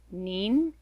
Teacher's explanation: this character is nin said with a rising second tone